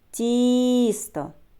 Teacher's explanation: А скільки складів у цьому слові тісто Тіс То два склади А на який склад падає наголос давайте вимовимо слово тісто на перший склад